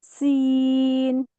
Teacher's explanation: পাখির মতো সিসি আওয়াজ আসবে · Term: সিনের বৈশিষ্ট্য